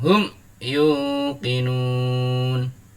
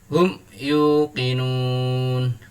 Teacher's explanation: Cara membacanya dibaca panjang sampai dengan 6 harokat. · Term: mad arid lis sukun